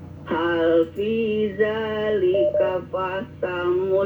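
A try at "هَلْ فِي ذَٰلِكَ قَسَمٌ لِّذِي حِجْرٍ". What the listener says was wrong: Bukan fa ya. Jangan fasamun tapi qasamun, pakai qaf.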